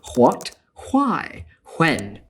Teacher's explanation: older speakers today who still pronounce the H in these question words, you will hear that they put the H before the W